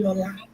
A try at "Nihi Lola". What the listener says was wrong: You've actually not been pronouncing it well. It's Nihi Lola.